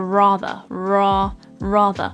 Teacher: is one of the key features of an RP accent where the r at the end if it's not followed by a vowel is actually dropped off and not pronounced this is also known as a non-rotic r so essentially in · The R at the start we pronounce and we create the R sound like a rather, ra, rather. But at the very end of the word, we don't actually pronounce the R sound. And this is one of the key features of an RP accent, where the R at the end, if it's not followed by a vowel, is actually dropped off and not pronounced. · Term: non-rhotic R